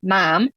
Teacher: michiganders would say things like Mom and now that's moving further back